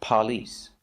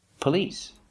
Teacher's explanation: the stress is on the second syllable God don't remind me of it's not on the first syllable